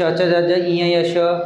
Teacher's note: आपली जी जीभ आहे तालूला स्पर्श होते म्हणून याला तालव्य वर्ण म्हणतात